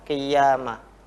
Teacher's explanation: seolah-olah qaf berharokat kasroh ini masuk ke ya